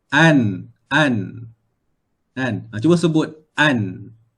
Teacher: Kita mesti kita punya hujung lidah terangkat dan kena pada bahagian gusi tempat tumbuh gigi atas. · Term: Nun